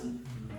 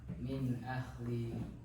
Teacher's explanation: jelas tanpa dengung ketika bertemu huruf tenggorokan atau halqiyah